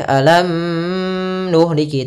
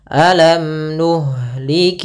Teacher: izhar berarti mimnya jelas tidak boleh ditahan tidak boleh alam nuhliki enggak tapi langsung saja alam nuhlik kemudian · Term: izhar syafawi